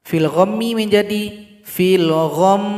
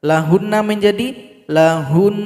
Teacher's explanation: Cara berhentinya sukunkan huruf mim dan nun, lalu dengungkan 2 harokat atau 2 ketukan.